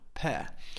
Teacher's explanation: see my mouth is completely open at the end pear okay we don't pronounce the r at the end it's an open Sound